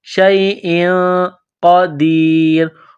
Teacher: تنوین کے بعد قاف ہے، حروف اخفا ہے تو تنوین پر غنہ کریں گے، آواز ناک میں چھپائیں گے، شیء قدیر. قاف کو موٹا کرنا ہے، بڑا قاف ہے نقطوں والا. · قاف کو موٹا کرنا ہے، بڑا قاف ہے نقطوں والا. دال کو یا کے ساتھ ملانا ہے.